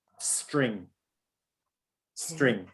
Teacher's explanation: you have the s the t and the r coming together without any vowel sounds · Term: consonant cluster